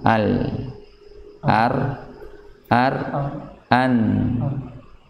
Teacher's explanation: Jadi nun bagian paling depannya, gusi bagian depannya, kemudian mundurnya lagi huruf ra, mundurnya lagi huruf lam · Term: makhraj